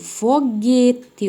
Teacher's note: eu não escuto o som do u